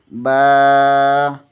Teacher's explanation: با بند ہونٹوں کے گیلے حصے سے ادا ہوتا ہے۔